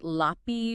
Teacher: Lapis becomes lapi without that final Z sound